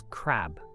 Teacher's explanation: The K is a voiceless velar plosive, a sound produced by blocking the airflow at the back of the mouth and then releasing it.